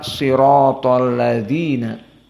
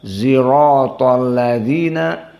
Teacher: Maka ini adalah usul yang pertama tentang permasalahan shad dibaca ismam. Jadi sirato menjadi zirato, dan asdaku menjadi azdaku.